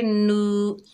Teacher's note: नून के ऊपर पेश है, आगे वाव साकिन है, ये वाव मद्दा है, एक अलिफ की मिकदार खींच कर पढ़ेंगे